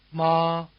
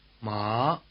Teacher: the high tone stays level while the rising tone climbs sharply starting slightly below the high tone and reaching the top of the range